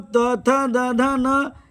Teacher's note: त वर्ग त वर्ग का मतलब त, थ, द, ध, न ये दंतव्य है · कम वायु शक्ति की जरूरत होगी त द न में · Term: अल्पप्राण